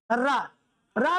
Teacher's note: उच्चारण के समय जीभ में थोड़ा सा कंपन होता है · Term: लुंठित वर्ण